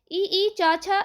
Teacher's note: ई, चा, छा इत्यादि का उच्चारण तालव्य से होता है।